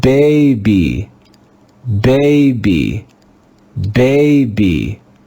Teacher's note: Do you hear how the first syllable is stressed?